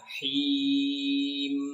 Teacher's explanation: Itu dipanjangkan ya, him itu mad arid disukun. Itu boleh memilih antara 2, 4 atau 6, tapi biasanya saya sarankan di 4 harokat saja supaya lebih mudah.